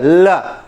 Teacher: जब ल बोलते हो तो जबान आपके पीछे पलट जाती है और बगल से हवा निकलती है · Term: पार्श्विक